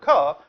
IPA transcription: k